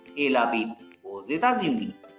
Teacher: Here X is pronounced as Z because before X it's U, after X it's capital E, like two vowels. X is placed between two vowels, so X is pronounced as Z.